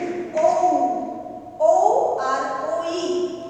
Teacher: এই দুটো কিন্তু একক স্বর নয়, এগুলো কি না এগুলো হচ্ছে যৌগিক স্বর। কিভাবে না যৌগিক স্বর কাকে বলে না দুটো ভিন্ন স্বর যখন সন্ধির মাধ্যমে একসাথে মিলিত হয় তখন তাকে যৌগিক স্বর বলা হয়।